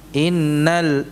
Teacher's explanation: Inna nunnya bertasydid, jadi ditahan dulu. Jangan dibaca langsung.